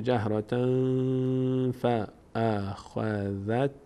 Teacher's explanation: پس قاعده 4 اجرا میشه اخفا میشه. تنوین باید از بینی ادا بشه به همراه مقداری وقف روی اون، میشه جهرة فاخذتکم.